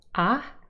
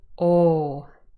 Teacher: we have unrounded ah and rounded oh